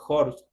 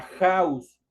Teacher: otra H que se le conoce como la H aspirada y que en el momento de pronunciarse se pronuncia como una j